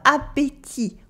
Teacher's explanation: We have the bon, that means good, bon with a nasal on, bon, and we have appétit with the e sound in the middle and a silent t at the end